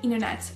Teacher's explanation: aux États-Unis, beaucoup de personnes vont oublier le T du milieu et vont dire internet au lieu de dire internet.